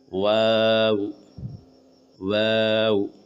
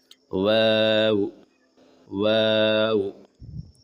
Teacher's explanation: शुरू और आखिर में होठ गोल होंगे